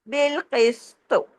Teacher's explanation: تو ہم تو کو ہلا دیں گے، کلکلا کریں گے، کیونکہ کتب جد کا بھی لیٹر ہے نا.